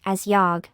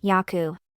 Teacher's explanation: the final consonant, botchim, should be pronounced without a burst of sound. For example, let's look at the pronunciation of the word, yog.